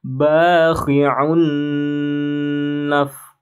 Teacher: Fathah bertemu dengan alif, ini adalah mad tabi'i, dua harokat, ba, kemudian khi'un, dhammatain ya, baris dua di depan, bertemu nun, maka ini idgham bi gunnah. Kalau idgham bi gunnah, tasydidnya digunnahkan. Bakhi'un naf, ya, tasydidnya harus ditahan. Kalau tidak ditahan salah.